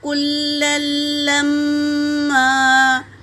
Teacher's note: تشدید ہے اور تنوین ہے، مگر دوسرے لام پر تشدید ہے تو تنوین والے لام کو دوسرے لام میں ملا کر پڑھیں گے